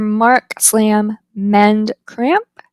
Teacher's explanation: The m is voiced, it's bilabial.